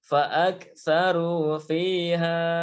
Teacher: Fa'aktsaru fiha, ya fiha panjang 2 harokat. Ya, kalau kita berhenti panjang 2 harokat. Tapi kalau langsung maka fihanya dibaca pendek.